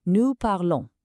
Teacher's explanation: The nous ending o n s gives you a nasal on sound